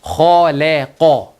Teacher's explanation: the lam is sandwiched between 2 thicks. No smile, smile, no smile.